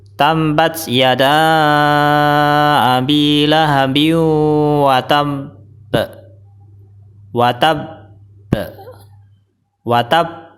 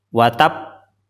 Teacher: bacaan yang benar adalah tambat Yada Abi lahabi watab watabba watab jadi tasdidnya dulu disempurnakan baru qalqalahnya atau baru dipantulkan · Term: qalqalah akbar